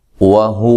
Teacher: واو کو ادا کرتے ہونٹوں کو گول کرنا ہے، اور اس کو بھی اسی طرح لمبا نہیں کرنا.